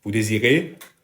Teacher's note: On the first one, this is the easiest way you can ask a question in French. Use the affirmative vous désirez, you want, but with a rising intonation at the end of a sentence.